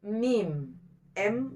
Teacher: 2 perut bibir bagian luar hurufnya mim